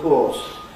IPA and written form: əv ˋkɔːs (of course)